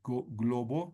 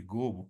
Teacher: en vez de decir globo dice gobo no han omitido la l o inversión en este caso por ejemplo en vez de decir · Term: omisión